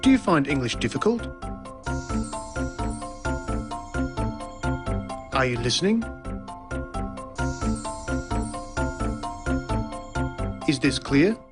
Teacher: there's the high or rising tone used for asking a yes-no question